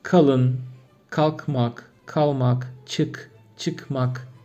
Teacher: K harfi kalın ünlülerle bile biraz daha yumuşak söyleniyor. Daha ön damakta. Türkmence'de ise art damak yani.